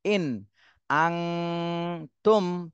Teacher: আবার এখানে নুন সাকিন আসছে কিন্তু এই নুন সাকিনে ইকফা গুণনা করতে হবে। কেন? এর পরের হরফটা খেয়াল করেন, এই পরের হরফ হলো ইকফার হরফ আসছে, তা এজন্য এই নুন সাকিনে গুণনা করতে হবে।